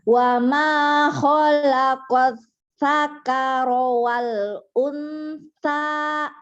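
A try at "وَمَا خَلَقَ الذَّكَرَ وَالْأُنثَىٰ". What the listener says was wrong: Iya, bukan sakaro, za. Nih ya. Wa ma khalaqal za, bukan sakaro. Sakaro mah mabuk nanti. Zakar, zakar itu laki-laki. Wa ma khalaqal zakaro wal unsa.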